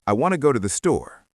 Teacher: Wanna soft to the becomes to the or almost disappears. Go and store are strong.